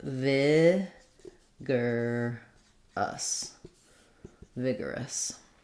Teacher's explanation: So we have first syllable stress in vigorous. We have the I vowel.